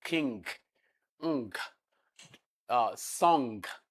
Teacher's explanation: It's a nasal sound. The release of air is not from the mouth from the nose · the back of the tongue is touching the velum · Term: velar nasal